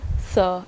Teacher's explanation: the tip of the tongue making a constriction there at the upper teeth to produce a dental sound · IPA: [θ ð]